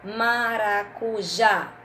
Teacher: maracujá sílaba forte é o já